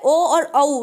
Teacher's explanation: ओ और औ दोनों का है कंठोष्ठ